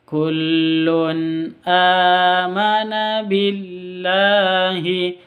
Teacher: tanwin bertemu dengan Hamzah jelas bacanya karena idhar halq